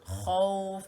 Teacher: Khaw ni tebal di kawasan hujung kerongkong